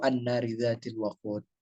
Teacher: Nunnya adalah nun yang bertasydid disebut gunna. Alif lamnya bisa dibaca dia tidak berharokat atau tidak dibaca alif lamnya karena dia termasuk alif lam syamsiyah.